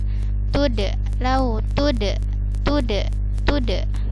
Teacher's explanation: Perhatikan di sini waddu, dalnya bertasydid, diperhatikan tasydidnya. Kemudian di sini ada dal sukun, dia dibaca qalqalah terpantul